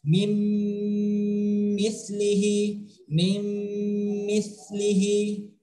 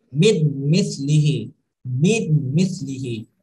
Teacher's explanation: Jadi seolah-olah bunyi nun mati itu menyatu dengan bunyi mim yang ada di setelahnya. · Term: idgham